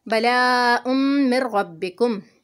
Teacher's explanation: تنوین کے بعد میم مشدد ہے، یرملون کا قاعدہ ہے، یہاں پر بھی ہم نے ادغام کرنا ہے، آواز کو ملانا ہے غنہ کے ساتھ